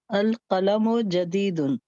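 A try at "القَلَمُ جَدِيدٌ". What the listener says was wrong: mashallah. Thank you.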